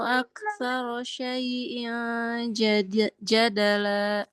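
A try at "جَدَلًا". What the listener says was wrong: Jangan ada la-nya. Jangan ada la-nya. Jadala.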